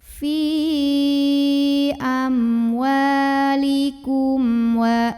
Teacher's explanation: Maka cara baca mim sukunnya adalah diizharkan atau mimnya dibaca dengan jelas. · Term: izhar syafawi